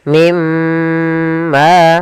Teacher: Cara membacanya masukkan nunnya ke huruf mim dan kemudian ditahan dengan gunah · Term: idgham bi gunnah